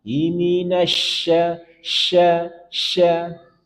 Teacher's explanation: untuk shinnya ada sifat tafashi, menyebar. Iminasya, sya, menyebar.